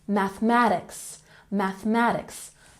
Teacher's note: Mathematics has the emphasis on the second syllable.